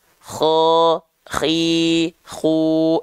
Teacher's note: k itu dilafalkan dari sini dari ujung tenggorokan kita